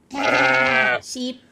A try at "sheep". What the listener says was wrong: I thought you said like cheap, like not expensive, but cheap. Sheep.